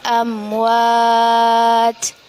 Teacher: mim sukun bertemu dengan Wow amwaj hukum bacaannya ialah izhar syafawi kita baca dengan jelas